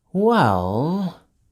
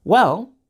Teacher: has a falling intonation but when we use well to show that we are done talking we use Rising intonation